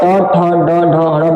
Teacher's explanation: देखिए जीव हमारा मूर्धा में सटता है, इसीलिए इसका उच्चारण स्थान मूर्धा हो जाएगा।